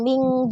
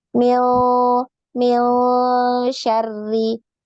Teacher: Bukan kita baca min, bukan min, tapi dia bunyinya di antara n dan ng ya. Jadi berada di pertengahan antara n dan ng. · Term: Ikhfa